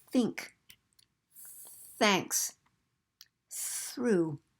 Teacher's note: not using any voice that th sound like think thanks through that th has no voice so we're going to represent it with this symbol and that's called the theta symbol